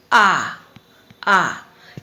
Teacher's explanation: इसमें मुख द्वार पूरा खुला होता है पूरा खुला होता है मुख द्वार बोलकर देखा जा सकता है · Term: विवृत स्वर